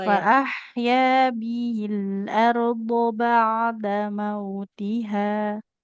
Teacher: h-nya kepanjangan ee cukup dua harakat saja